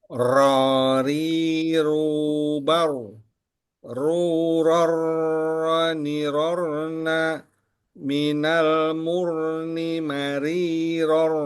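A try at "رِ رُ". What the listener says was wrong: Ya. Baik. Barakallah fik.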